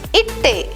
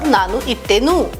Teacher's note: when the past tense marker ta is added, the last consonant da is assimilated with ta to give double ta. Idu plus ta plus a becomes itte.